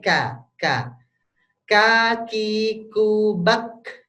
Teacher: kalau Kaf itu sama seperti qf dipangkal lidah cuma yang berbeda adalah kalau k itu agak depan dikit